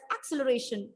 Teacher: I gave the stress on the first syllable, and that was wrong according to the rule. It is, the perfect pronunciation is acceleration.